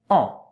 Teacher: A-N, it's the sound en. A bit of air has to come out of your nose when you pronounce it well. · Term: nasal sound